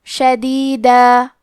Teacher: اور ہم کلمت شدیدہ پہ رکے تو تنوین زبر پہ مد الف سے رکیں گے